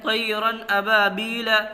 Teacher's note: 2 زبر کی تنوین ہے، اور اس کے بعد میں تنوین کے بعد میں حرف حلقی کے 6 حرفوں میں سے حمزہ آ رہا ہے، تو اس لیے یہاں اظہار ہوگا